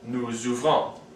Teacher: the S of nous, vous, and il goes along with the O, or any vowel, of the verb that's following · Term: liaison